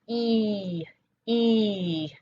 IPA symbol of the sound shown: i